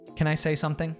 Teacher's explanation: he reduces can to Kin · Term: connected speech